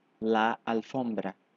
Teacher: nesta palavra a tônica Não é a primeira sílaba mas sim a segunda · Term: sílaba tônica